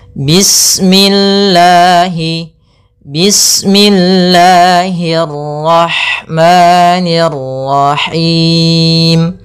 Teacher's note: pada lafal Allah ada hukum tajwid berupa mad tabi'i, yaitu adanya lafzul jalalah. Panjangnya lafal Allah yaitu 2 harakat